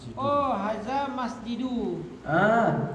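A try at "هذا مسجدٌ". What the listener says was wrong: Bertanwin. Gak ada alif lam. Kalau gak ada alif lam dibaca tanwin.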